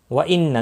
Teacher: نون مشدد پر غنہ ہوگا